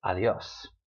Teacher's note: We say adios, with the stress on the yo, on the o in that combination. Not on the a.